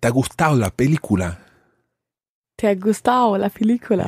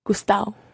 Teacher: Yeah, and I did something there that's very, very common in Spain in particular, and that is change the ado to a kind of au. Au. Au, that's right.